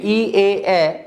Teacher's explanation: তো আমরা যখন এই ই এ উচ্চারণ করি, ই এ এ, নিচের ঠোঁটটা দুই পাশে একটু চ্যাপ্টা হয়, এই জন্য এই দুইটা স্বরধ্বনিকে প্রসৃত স্বরধ্বনি বলে। তাহলে আমরা এটার নাম দিতে পারি, হ্যাঁ, সম্মুখ উষ্ঠাধর প্রসৃত স্বরধ্বনি।